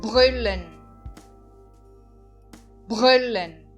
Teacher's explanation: eu estou enfatizando o u o né É como se tivesse um acento invisível nele